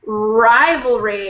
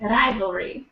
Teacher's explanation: It sounds like when an R starts a word, you tend to roll it.